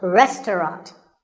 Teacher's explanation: the second syllable is just ta and the third is rot